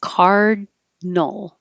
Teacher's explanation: we don't say the middle I so we drop the I and it's just Cardinal so not Cardinal card your tongue goes up for the D